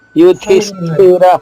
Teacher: అక్కడ ధి మహాప్రాణి ధి, మళ్ళా స్థిలో స్టాక్ కింద ఉన్న ఠా కూడా మహాప్రాణి ఠా